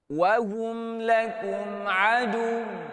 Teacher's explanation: Adu ni, tuan-tuan dan puan, dari segi intonasi, kita kena nada menaik sebab kita sedang bertanya.